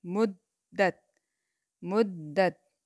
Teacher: میم پیش دال مد، دال زبر تا، دت، دال کے اوپر شد ہے، اس وجہ سے دال جو ہے وہ 2 بار ادا کی جائے گی